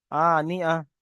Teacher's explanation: তাটা বাদ চলে যাবে এবং তানবিনটাও বাদ যাবে, গিয়ে শুধু হা থাকবে, হা এর উপর সাকিন হবে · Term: হা সাকিন